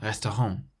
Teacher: So we emphasize the last syllable